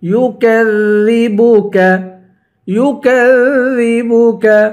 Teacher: کاف کو باریک پڑھیں گے, ذال پہ زبان نکالیں گے, نرمی کے ساتھ پڑھیں گے.